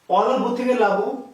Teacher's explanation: অলাভু থেকে লাভু, স্বর লোপ পেয়েছে কোথা থেকে, লোপ পেয়েছে শুরু থেকে